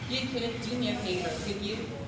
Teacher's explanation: So we use rising intonation to ask a real question.